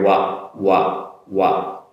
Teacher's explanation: First on the wa sound, like so wa. Similar to the Japanese wa, but a little bit more in the throat area